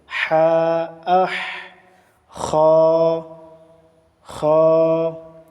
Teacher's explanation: আদনায় হলক কণ্ঠনালীর উপরের অংশ খা উচ্চারিত হয়। · হার মাখরাজটা হচ্ছে এই অসতে হলক কণ্ঠনালীর মধ্যস্থল।